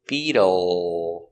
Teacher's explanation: The dark L with the tongue in the back. Beetle. Stress on the first syllable.